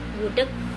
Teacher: Bunyi hambat velar tak bersuara dan tak lepas jika terdapat di akhir kata